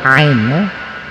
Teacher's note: Ain itu tempatnya di wasqul halqi atau wasaqul halqi, pertengahan tenggorokan. Nah, kalau orang membaca ain itu masuk ke hidung, berarti dua makhraj.